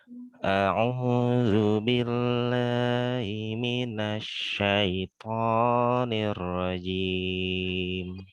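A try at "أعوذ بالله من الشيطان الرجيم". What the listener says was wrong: Nah, tonya jangan ada angin ya. A'udzu billahi minasyaitonir rajim.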